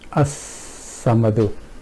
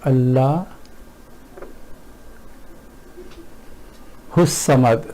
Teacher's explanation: What happens here is that from the last letter of this lafaz jalala, we have gone straight to swad, which is in this case, because it's a sun letter, so we have not even pronounced lam here, and we have totally ignored alif, this, which is actually hamza.